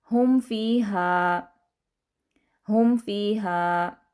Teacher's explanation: سب سے پہلے جو مشق ہے وہ ہے اظہار، یعنی میم ساکن کے بعد با اور میم کے علاوہ کوئی بھی حرف آ جائے تو وہاں پر ہم میم کی آواز کو نارمل طریقے سے پڑھیں گے، ظاہر کر کے پڑھیں گے۔